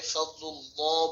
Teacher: আল্লাহ শব্দকে পুর করতে হবে অর্থাৎ মোটা করে উচ্চারণ করতে হবে